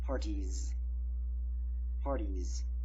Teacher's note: Party, letter Y is pronounced E, so you just add an E is a voiced sound, so you just add a Z sound, a voiced S, so it is a Z sound